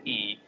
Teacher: la cavidad oral se estrecha, la lengua sube y va hacia adelante. El timbre del sonido es agudo.